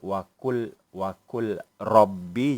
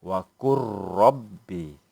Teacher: Lam itu mati, masuk ke dalam ra, ra itu ada baris sehingga menjadi huruf yang bertasydid. Seolah-olah lam itu tiada, hanya ada ra yang bertasydid. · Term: idgham mutaqaribain